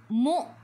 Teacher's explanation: hamzah baris sukun, kena baca dengan putus. Baca dengan putus ataupun tahan.